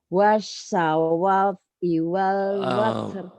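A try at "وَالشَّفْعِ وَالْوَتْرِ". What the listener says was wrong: Fantastis Bu, wasyab'i. Wasyab'i Bu, bukan wasawa. Wasawa, ibu kenapa jadi wasawa? Wasyab'i.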